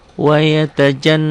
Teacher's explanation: Dibacanya double karena tanda ini tanda pendobel sidah ini. Dengung ke hidung dan ditahan. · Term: guna